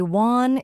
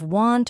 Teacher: If you don't say the T in want, it might sound like one.